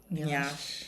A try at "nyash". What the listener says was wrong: It is not nyash. It is. Please, ladies and gentlemen, you don't stress the NY. It's not a droid. It's just nyash.